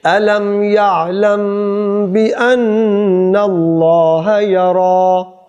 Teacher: میم ساکن کے بعد با آ گیا تو یہ اخفاء شفوی ہے. یہاں پر ہم اس کو ملائیں گے، غنہ کریں گے · اللہ کو پر کریں گے اور انا پر غنہ کریں گے. یرا، را کو بھی پر کریں گے.